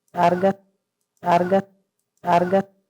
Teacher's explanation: Tenemos casos también de rotacismo, donde hay un intercambio de L por R